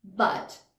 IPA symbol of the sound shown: ʌ